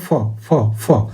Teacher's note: এবার ফ বলার চেষ্টা করো, দেখবে লোয়ার লিপ আর আপার টিথ দিয়ে বলছো ফ ফ ফ, দেখবে নিচের ঠোঁটটা নিচ থেকে উঠে গিয়ে আপার টিথে গিয়ে লাগছে, তারপরে ফ আর আমাদের ভ বলতে পারছো। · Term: লেবিও ডেন্টাল